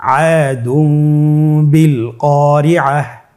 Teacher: তাহলে আমরা যেটি করব যে তানবিনকে মিম দ্বারা পরিবর্তন করে গুন্নার সহিত পড়ব